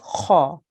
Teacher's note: Kha is a thick sound, so you have to make a round mouth here.